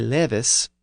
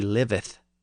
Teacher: verbs in third-person singular end with the northern S rather than the southern th. So in the passage I just read, we have he levis, or he lives, rather than he liveth.